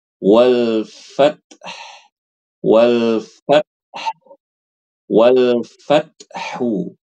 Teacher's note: Wal fat ini bukan qalqalah, ini sifat hams namanya